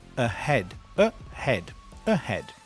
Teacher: So this word ahead. It begins with a schwa, I call it the neutral sound